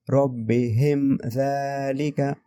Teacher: ہم غنہ نہیں کریں گے. ٹھیک ہے، ہم یہاں پر اظہار کریں گے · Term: اظہار شفوی